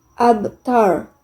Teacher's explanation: Cara membacanya dipantulkan secara ringan. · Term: Qalqalah sugro